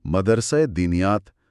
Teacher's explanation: ہا کی آواز ایک بہت ہی ہلکی، تقریباً نہ ہونے کے برابر جھلک کے ساتھ ادا ہوتی ہے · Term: ہائے مختفی